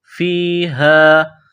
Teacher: فیہا گول ہا ہے چشمے والی، منہ سے ہوا نکالنے کی طرح اس کو صرف پڑھتے ہیں